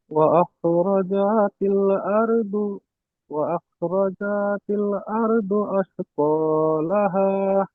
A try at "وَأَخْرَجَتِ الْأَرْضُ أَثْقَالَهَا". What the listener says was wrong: এখানে জিমটা টান হয়ে যাচ্ছে, ও আখরাজাতিল, জি, হরকত যেখানে থাকবে সেখানে টান হবে না।